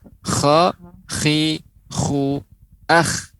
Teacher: huruf kha dia ada seperti garukan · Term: hikkah